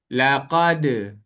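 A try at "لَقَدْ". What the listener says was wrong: Jangan tambah hamzah belakang. Jangan laqad. Jangan bunyi de tu tak nak. De sahaja.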